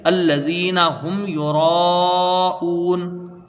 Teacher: را کو پر کریں گے اور کھینچ کے اس کو پڑھیں گے